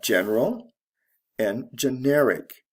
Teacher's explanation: the stress shifts from the first to the second syllable Al to IC this is from an adjective to another adjective